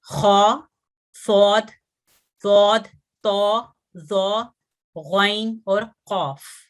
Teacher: इनकी अदायगी में जबान की जड़ ऊपर तालू की तरफ उठती है और आवाज कुछ मोटी या भरपूर हो जाती है, और हमारे जो होंठ हैं वो भी थोड़े गोलाई की तरफ हो जाते हैं। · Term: हुरूफे मुस्तालिया